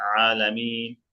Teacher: আইনটা গলার মধ্যখানে একেবারে গলার মাঝখান থেকে সুন্দর করে